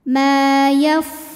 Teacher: Sebab ada alif yang sebelumnya berbaris fathah, maka cara bacanya dipanjangkan mimnya ini 2 harokat. Mayaf, fa-nya pakai angin ya, karena dari segi angin fa ini keluar angin hams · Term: mad tabi'i zahiri